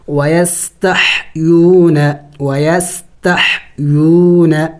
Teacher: سیٹی کی آواز نکلنی چاہیے اس لیے کہ سین سیٹی والے حروف میں سے ہے